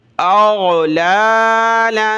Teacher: لام کو کھینچیں گے، ایک الف کی مقدار ، کھڑا زبر ہے، اور یہاں لام کے اوپر دو زبر